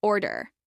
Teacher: This is pronounced with stress on the first syllable